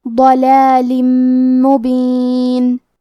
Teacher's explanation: آخری میں لام کے نیچے تنوین زیر ہے، پھر حرف المیم ہے کلمت مبین۔ میم حروف الادغام بغنہ میں سے ہے تو ہم یہ حکم کو غنہ اور تشدید کے ساتھ ادا کریں گے · کلمت ضلال میں حرف الضاد کو تفخیم سے مطلب بھاری آواز میں پڑھیں گے۔ آخری میں لام کے نیچے تنوین زیر ہے، پھر حرف المیم ہے کلمت مبین۔